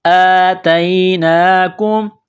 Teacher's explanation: حمزہ کڑا زبر ایک الف کی لمٹ میں کھینچیں گے ، یہ نقطوں والی تا ہے، اس کو باریک کرنا ہے،